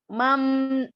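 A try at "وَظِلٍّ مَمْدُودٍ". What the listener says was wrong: baca mim coba lihat video Ana ya. Nggak boleh mam. Bibir nggak boleh gini. Mam. Nempel aja. Nggak boleh melipat bibir, nggak boleh. Ntar latihan ya itu hati-hati kebiasaan mimnya harus dihilangin ya. Lipat-lipat bibir.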